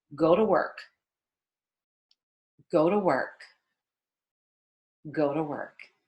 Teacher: When you're connecting your speech, you're going to have to pronounce that T in the American way, which is turning it into a very light D